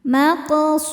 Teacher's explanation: Su mad thabi'i dzahiri karena ada wau sukun sebelumnya dhommah. Cara bacanya panjang dua harakat.